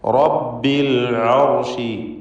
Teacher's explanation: റാഹ് തടിപ്പിച്ച് തഫ്ഖീം ചെയ്ത് ഉച്ചരിക്കുക.